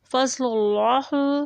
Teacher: لام کے اوپر پیش ہے، اس کا لام موٹا پڑھا جائے گا